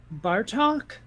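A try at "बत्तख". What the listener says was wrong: No R. Batak.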